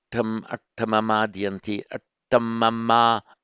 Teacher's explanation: attamama, short, because it's a short vowel, single consonant followed directly by a vowel.